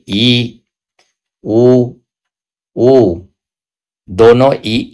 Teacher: वे स्वर जिनके उच्चारण में मुंह कुछ बहुत कम खुलता है। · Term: संवृत स्वर